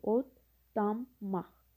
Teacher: L samiti D samitinə çevrilir. N samiti isə M samitinə çevrilir. Nəticədə belə olur.